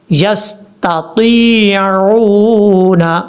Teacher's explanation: تا کے بعد یا ہے، پھر عین ہے. تا کو جب یا سے ملائیں گے تو اس کو لمبا کریں گے ایک الف کی مقدار، کیونکہ یا مدہ ہے